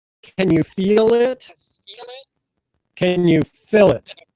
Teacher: notice how I'm giving feel a lot of stress.